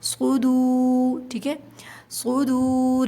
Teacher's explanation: واو ساکن سے پہلے جب پیش آ جائے تو وہ واو مدہ کہلاتا ہے، 2 کاؤنٹس کھینچیں گے